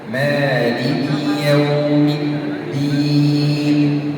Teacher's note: وكلمة الدين أيضا الدال عليها شدة لابد أن أضغط عليها لأنها بدالين، دال ثم دال.